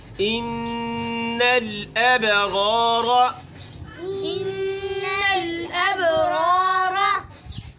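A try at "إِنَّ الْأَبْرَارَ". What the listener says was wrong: दोबारा पढ़े, गुन्ना पूरा पढ़े।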